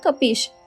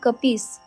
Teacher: संस्कृत मधला जो तालव्य श आहे शहामृगाचा तो अवधीमध्ये दंत्य स झाला आहे म्हणजे शचा स झाला आहे तिहू लोक म्हणजे तिन्ही लोक त